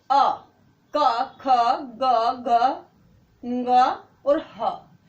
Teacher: उसका जो दीर्घ पार्ट है वो भी उसी में है। कवर्ग 5 वर्ण कवर्ग से, और ह ये बोले जाते हैं कंठ से।